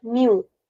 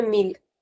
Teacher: in Brazilian Portuguese where we do not pronounce the L at the end, we'll say new.